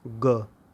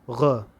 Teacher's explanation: यदि नुक्ता के साथ इसे बोलना हो तो उच्चारण स्थान जो होगा वो कंठ से थोड़ा सा और नीचे चला जाएगा, तब आप बोलेंगे ग।